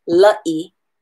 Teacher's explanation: You need to put the glottal stop in between those two letters, or else you need to glide them together.